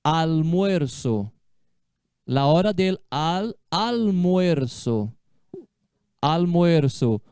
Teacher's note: o L antes de consoante, né? Não vai ter som de U. A língua vai lá no céu da boca, al. Olha, uma palavra legal.